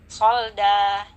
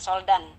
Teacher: Kita baca dengan menghilangkan tanwinnya, kita baca fathah biasa, namun kita panjangkan selama 2 harkat atau 2 ketukan. Solda ya, jadi bukan soldan. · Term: mad aywad